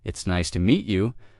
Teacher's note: When you listen to sentences like, "It's nice to meet you." Notice the rise and fall of the tone. The voice goes up slightly at nice and falls gently at you.